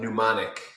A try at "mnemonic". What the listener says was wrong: Not mnemonic, mnemonic. Mnemonic would mean that it has air in it. Mnemonic means it reminds you of stuff. M-N-E, not P-N-E-U. Yeah, it's mnemonic.